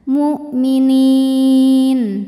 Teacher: Maka nun panjang, boleh 2, boleh 4, boleh 6 harokat asal konsisten dalam sekali bacaan. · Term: mad arid li sukun